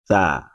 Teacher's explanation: tsa dibunyikan dengan mengeluarkan sedikit bagian dari ujung lidah bertemu dengan dua gigi seri atas